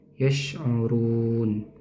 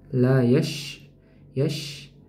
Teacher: huruf syin juga dia memiliki sifat mengalirnya aliran udara. Mengalirnya aliran udara dan mengalirnya aliran suara.